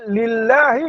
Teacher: Kemudian lam dibaca dengan muraqqaqah, baca dengan nipis. Sebab apa? Sebelum Allah itu ada huruf lam yang berbaris di bawah.